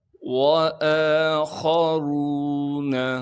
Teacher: خا کو موٹا کر کے پڑھیں گے کیونکہ خا موٹے حروف میں سے ہے۔ را کو بھی موٹا کر کے پڑھنا ہے کیونکہ را پر پیش ہے۔ · واو کے بعد الف موجود ہے، لیکن یہ الف نہیں ہے بلکہ حمزہ ہے۔ حمزہ پر کڑا زبر ہونے کی وجہ سے حمزہ کو ایک الف کے مقدار کھینچیں گے۔